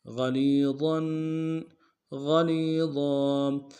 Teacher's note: ضا کے اوپر تنوین غنہ کریں گے. وقف صورت میں ضا کو الف سے بدل لیں گے